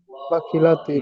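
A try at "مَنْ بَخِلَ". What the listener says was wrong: মিম নয়, মাম বাখিলা, মাম বাখিলা।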